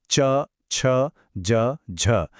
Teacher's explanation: पहला स्टेप हवा को पूरी तरह रोका जाता है बिल्कुल स्पर्श की तरह। और दूसरा स्टेप उसे घर्षण के साथ फ्रिक्शन के साथ छोड़ा जाता है बिल्कुल संघर्ष की तरह। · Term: स्पर्श संघर्षी